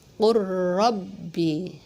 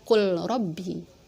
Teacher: Lam sama ra, jadi lamnya dilebur masuk ke huruf ra · Nah, huruf yang pertama dilebur masuk ke dalam huruf yang kedua, yaitu huruf ro. Jadi huruf yang pertamanya nggak dibaca, langsung ke huruf yang kedua. Jadi bacanya qur rabbi, enggak dibaca qul rabbi, gitu ya.